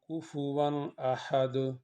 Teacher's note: تو ہم یہاں پہ کفواً ناک میں آواز کو نہیں لے کے جائیں گے، کیونکہ حروف حلقی میں سے حمزہ آ گیا ہے